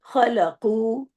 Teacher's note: खलकु इसको आपको इसको भी इसको लंबा करना है। दो हरकत क्योंकि पेश के बाद वाव आ रहा है।